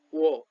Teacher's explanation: जस्तो प भन्दाखेरि ओठ मिल्छ अनि छुट्छ, प, फ, ब, भ, म, व गोलित हुन्छ ओठ, ओठ नै सक्रिय हुन्छ, ओठको सहायताले व उच्चारण हुन्छ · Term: ओष्ठ्य